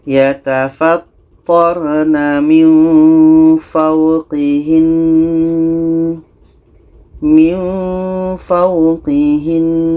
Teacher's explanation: ada nun tasydid, maka kita dengungkan dulu. Setelah itu baru matikan nunnya. Kita baca yatafattarna min fawqihin, min fawqihin.